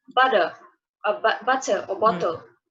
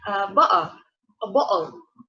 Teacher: the Cockney is distinguished with its glottal stop instead of T in words like butter